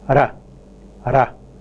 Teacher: there is only one single contact by the tip of the tongue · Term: tap